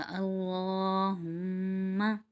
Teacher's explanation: دونوں ہونٹوں کو ملا کر ایک الف مقدار روکیں گے تو اس کا غنہ ادا ہو جائے گا